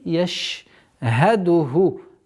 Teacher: Шин с применением свойства тафаши.